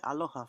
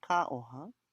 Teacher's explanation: in Hivaoa, they often drop the L's